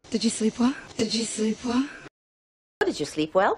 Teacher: subiendo la entonación al final de esta pregunta